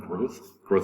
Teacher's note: pronounce the t and h the last two letters growth um tongue rubs up against the bottom two teeth the th sound